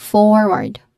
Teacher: it has a stress on the first syllable with a longer OR sound